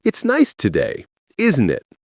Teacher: Tag questions at the end have 2 intonation patterns with different meanings. Rising tag, uncertain, genuinely asking, it's nice today, isn't it? Voice goes up.